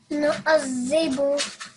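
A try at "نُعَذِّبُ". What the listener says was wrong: Nu'adhib. Zib. So make sure that the tip of your tongue is coming out and then touching your upper teeth. Nu'adhib.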